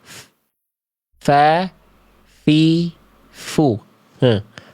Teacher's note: Dari ujung gigi seri atas menyentuh ke badan atau perut bibir bawah. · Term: huruf fa